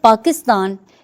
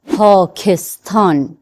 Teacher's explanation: مثلا لفظ پاکستان، ہم بولتے ہیں پاکستان، اسی لفظ کو فارسی میں کہتے ہیں پاکستان۔ دیکھیں پے، کے اور تے کے ساتھ ہا کی آواز آتی ہے، جیسے کہا جائے پاکستان۔ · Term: ہا کے ساتھ